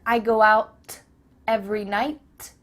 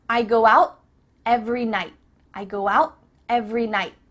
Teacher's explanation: your tongue is at the top of your mouth you're about to make the T sound but no air goes through so it's just stopped at the top of your mouth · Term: cut off the T